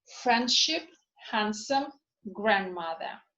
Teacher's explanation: there is the tendency not to pronounce d when it is preceded by and then followed by another consonant